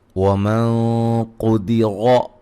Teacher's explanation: یہاں نون ساکن کا موٹا اخفا ہے، قاف کو موٹا ادا کریں گے، را کو موٹا ادا کریں گے